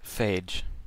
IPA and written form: ˈfeɪdʒ (Phage)